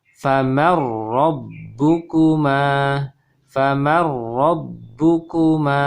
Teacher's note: Jadi tidak faman ro, tapi menjadi ro tasydid.